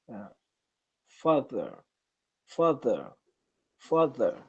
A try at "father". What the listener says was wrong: hmm So make it a little more of an ah sound. Father.